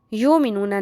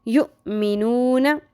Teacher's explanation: یؤمنون میں حمزہ ساکن آ گیا، یہاں پہ جھٹکا آپ نے اس کا دھیان رکھنا ہے کہ جھٹکا لگے گا